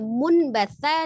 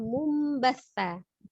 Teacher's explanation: merubah nun menjadi mim sukun ya, nun sukunnya menjadi mim sukun. Maka asalnya munbatha dibaca mumbatha, disertai dengan gunnah ya. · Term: iqlab